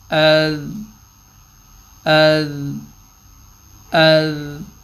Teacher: آواز چل رہی ہے اذ، کیونکہ اس پہ قلقلہ نہیں ہے تو آواز ایک سیکنڈ ٹھہراؤ میں رہے گی